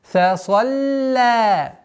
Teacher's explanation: Лям не подчиняется в твердости или мягкости впереди стоящему звуку, то есть сад. И поэтому лям всегда мягкая.